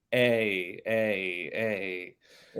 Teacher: it closes up exactly from an A to an e